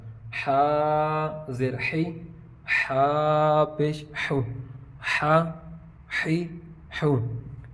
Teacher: حا زبر حا، حلق کا درمیان والا حصہ